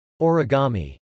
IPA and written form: .ɔːrigˈɑm.i (origami)